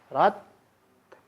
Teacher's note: Rotnya ada karena tak sukun itu ada sifat hamas yang melekat pada huruf ta. Maka ketika sukun itu hamasnya tidak berhenti, tapi suaranya yang berhenti.